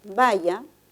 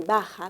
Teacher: el contraste de una lateral palatal con una fricativa velar